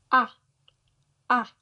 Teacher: La vocale A è sempre aperta in italiano. Si pronuncia con la bocca molto bene aperta e la lingua è un po' verso il basso.